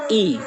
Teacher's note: तालु में ई, तालु स्वर जो है ई है